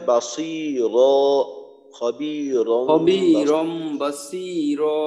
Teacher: তো এখানে বাসি এক আলিফ টান হবে, আর দুই জবরে অক্ফ করলে এক আলিফ টান দিয়ে পড়তে হয়